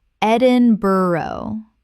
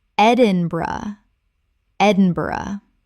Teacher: Three syllables with the bur collapsing to bruh.